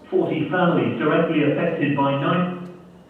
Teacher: he's producing a short phrase and it's got two prominences one at the beginning one near the end